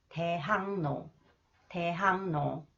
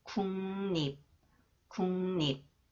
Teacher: 리을 is pronounced 니은, and 기역 influenced by 니은 So it is pronounced 이응